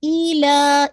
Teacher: ایلا کو آپ نے انشاءاللہ 4 to 5 کاؤنٹ پڑھنا ہے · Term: مد الجائز منفصل